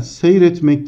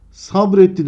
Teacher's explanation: Arkadaşlar seyretmek dersem i ünlüsünün düştüğü görülmektedir